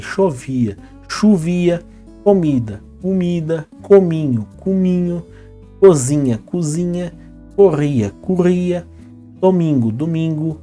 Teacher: por ser o na hora de falar vira u a subu isso acontece com todos os outros exemplos que nós